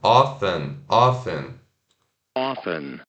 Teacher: E o often, né, que significa frequentemente, tem o O-F-T-E-N. Eu sei que tem esse T, mas geralmente não se pronuncia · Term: sem o T